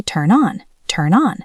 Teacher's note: Turn on the light. Turn ends in an N sound. On starts with a vowel. We say turn on. · Turn ends in an N sound. On starts with a vowel. We say turn on, turn on. Listen to that N sound bridge the gap. Turn on. Now you try.